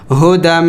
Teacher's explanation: غنہ بھی کرنا ہے، میم مشدد ہے